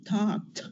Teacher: the ending instead of being D becomes T that has little vibration